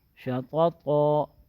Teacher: دونوں کو موٹا پڑھیں گے، ایسے نہیں کہ ایک موٹا ہو جائے دوسرا باریک ہو جائے